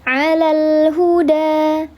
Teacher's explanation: lam takrif lamnya dibaca jelas ditandai dengan ada sukun menghadapi huruf ha namanya lam qamariah atau disebut juga sebagai izhar qomari alal bukan izhar halqi kalau izhar halqi nun mati atau tanwin bertemu huruf alhalqi kalau Ini izhar qamari yaitu lam yang dibaca jelas.